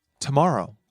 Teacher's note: Rising on the second syllable.